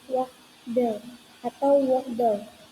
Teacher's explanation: Bunyi T di tengah kata sering kali diucapkan dengan cepat atau bahkan dihilangkan sehingga terdengar seperti waddle.